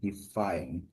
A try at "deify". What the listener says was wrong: Yeah, so this is not defy, it's deify. Okay, deify.